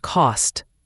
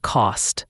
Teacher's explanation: your throat stops the air rather than your tongue touching the roof of your mouth. So it's not cost but cost.